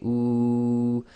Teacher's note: if you say ooh, you make a round circle with your lips and the back of your tongue will raise. And again, the air is flowing nicely through the oral cavity and the front of your mouth, i.e. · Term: dhamma wow